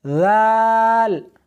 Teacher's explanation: زال نہیں، سختی نہیں کرنی بلکہ نرمی کے ساتھ پڑھنا ہے